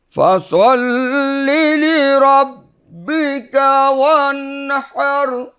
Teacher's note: ওয়ানহার এখানে বড় হা কণ্ঠনালীর মধ্যখান থেকে 2 নম্বর মাখরাজ, আইন হা একদম কণ্ঠ, ওয়ানহার একটু প্রেশার দিয়ে আদায় করবো, তাহলে সুন্দর হবে।